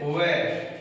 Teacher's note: तो व का उच्चारण स्थान क्या है? दंतोष्ठ। इसलिए इसको कहा जाता है दंतोष्ठ वर्ण।